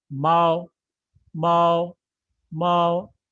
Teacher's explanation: initial is M, and finals are A and O, and the tone is over the final, which is the first tone. So we would read it Mao, Mao, Mao.